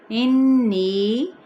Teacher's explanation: آلیہہ، آ پہ الف مدہ کا قائم مقام، ہا کی زبر کو جب گول تا ہا میں بدل دیں گے تو آلیہہ۔ انی، غنہ کرتے ہوئے چار حرکت کھینچیں گے